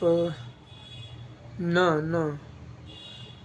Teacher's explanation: नाक और मुंह दोनों का यूज़ हो रहा है, इसकी वजह से ये अनुनासिक हो जाएगा।